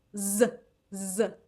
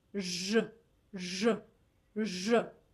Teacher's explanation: When I say Z, Z, my mouth is wide. But when I say J, J, J, my lips, they're like the circle.